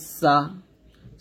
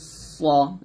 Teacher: শীষ দেওয়া। অর্থাৎ শীষ দিয়ে আপনাকে তিনটি অক্ষর উচ্চারণ করতে হবে। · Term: সফিরের হরফ